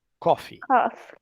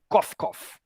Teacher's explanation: coffee, com um i mais alongado no fim, é café